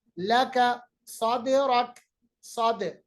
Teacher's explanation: देखिए दाल को हमने यहाँ पर कलकला किया